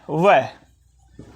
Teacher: व का उच्चारण करते समय हमारे होठों का आलिंगन तो होता ही है साथ-साथ में हमारी जीव दांतो को भी छूती है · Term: दंतोर